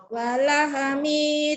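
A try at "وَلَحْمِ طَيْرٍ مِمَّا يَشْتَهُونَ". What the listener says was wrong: walahe, jangan ada walahe. Walah mitoy. Walah mi, jangan ada e-nya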